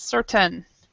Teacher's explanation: this AI is not an A sound. So it's what we call a schwa in linguistics. It's certain, an sound.